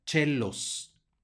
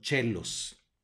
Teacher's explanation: tenemos otra vez el diptongo oe que va a sonar como e y la c que va a sonar como Che por lo